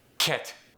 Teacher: When someone from Korea says it, it's going to get that puff of air.